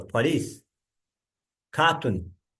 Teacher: Some French borrowings have retained their stress on the last syllable.